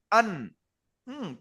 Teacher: আমি 9 নম্বর মাখরাজ শোনাচ্ছি নুন, নুনের মাখরাজ কি জিহ্বার আগা তার বরাবর উপরের তালুতে লেগে উচ্চারণ হয়, যেমন আন। তো এইরকম বলে বলে দিতে হবে।